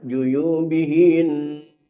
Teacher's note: berguna hukum musyaddadah maka ditahan selama dua harakat